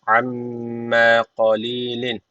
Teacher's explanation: Kale amme şeddeli mim var. Mutlaka bir elif tutuyoruz.